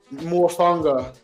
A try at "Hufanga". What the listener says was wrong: with the H? Hufanga. Hufanga. Hufanga. Oh, it's with an H. Hufanga.